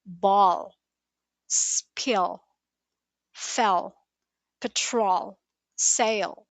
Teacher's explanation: Your tongue still touches the top, but the back of your tongue pulls slightly back, creating a deeper, heavier sound. It's the sound you hear in endings like LE, EL, AL in some cases. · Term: dark L